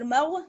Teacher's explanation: غین موٹا پڑا جاتا ہے